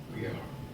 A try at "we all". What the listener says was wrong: Not we are. We all Okay. It's not even an A. It's not an O.